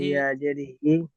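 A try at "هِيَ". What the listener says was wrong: ইয়া কেন পড়ছেন? ইয়ার উপরে সাকিন আছে, ইয়াটা বাদ দেন। হাজের হি, ইয়া জাবার ইয়া, হিয়া।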